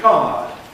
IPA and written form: kɑːd (card)